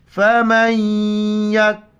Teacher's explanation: میم کو یا کے ساتھ ملائیں گے، نون کی وجہ سے یہاں پر ناک میں آواز پیدا کرنی ہے